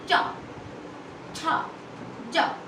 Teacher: इसको बोलते समय मेरी जीभ जो थी वो तालु से टच करी, तो वो हमारे होते हैं तालव्य वर्ण या तालु वर्ण।